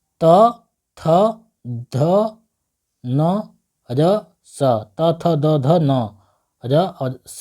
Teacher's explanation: देखिए दंत से उच्चारण हो रहा है यह दंत व्यंजन है